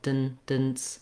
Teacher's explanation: when I say my D sound and then my N sound, there's a little bit of voicing in between. Kind of sounds like a vowel, dun, dance.